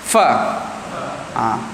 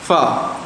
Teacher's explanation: Terbinanya huruf kerana gigi atas dengan bibir bawah. Yang ni setengah ulama mengatakan bahawa ia adalah makhraj syafatain, bibir. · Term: huruf fa